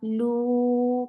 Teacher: Lu for the circle your lips and make it two counts long.